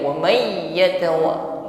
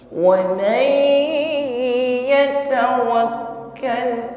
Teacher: setelah idgham masuk pada huruf ya bi gunnah, ya, didengungkan terlebih dahulu. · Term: idgham bi gunnah